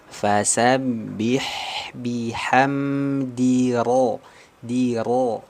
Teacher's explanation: Lalu ada huruf ro fathah tafkhim dibaca tebal · huruf ro fathah tafkhim dibaca tebal ya fasabbih bihamdir di Ro Jadi perpindahan antara huruf Dal kasrah tipis masuk ke huruf ro tafkim